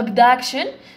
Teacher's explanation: the stress راهو في السكند سيلابو، راهو في السيلابو الثاني